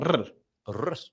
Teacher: instead of coming from the back of the throat and creating a sort of guttural sound like a R, we're going to roll the tongue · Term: rolled R